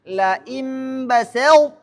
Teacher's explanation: karena sifat itbaknya huruf th harus terbaca ketika ia diidgamkan ke huruf ta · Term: idgham naqis